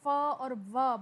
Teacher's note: अगर आप sound of फ और व बोल के देखें तो आपके आगे वाले दांत जो हैं वो नीचे वाले होठ से टकरा रहे हैं, और इन साउंड्स को लबीडो डेंटल साउंड्स कहते हैं।